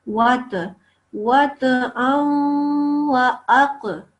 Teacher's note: We say qaf, with our mouth rounded a little bit. And ta and qaf are qalqala letters when they have a sukoon. So we say it with a bit of a jump.